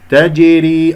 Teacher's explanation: تجري، الراء مرققة لأنها مكسورة